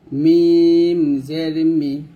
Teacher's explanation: মিমকে আমরা দুই ঠোঁটের শুকনা অংশে মিলাবো · মিমটা আমরা 2 ঠোঁটের শুকনো অংশে মিলাবো, 2 ঠোঁটের শুকনো অংশে মিল করে আমরা মিম উচ্চারণ করব, যেমন মিম জের মি, এরকম ভাবে।